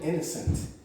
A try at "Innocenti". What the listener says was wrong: Innocent. Just put an E on the end.